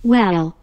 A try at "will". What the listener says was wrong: Well 이러는데 will이라고 발음해야 돼요. 이상하게 발음하는 거예요. 얘가. Will. Will.